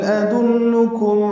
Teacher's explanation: ادلکم حمزہ اقصی حلق سے ادا ہوگا، اس کی صفت جہر کی ہے، دال کو نرمی سے پڑھیں گے، لام سے ملائیں گے، لام کو معروف طریقے سے نرمی سے پڑھتے ہیں، قاف باریک اور میم ساکن پہ اظہار شفوی۔